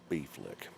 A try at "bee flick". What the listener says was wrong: Not beef lick, bee flick. I feel like the way you're saying it sounds like beef lick, like you're licking beef.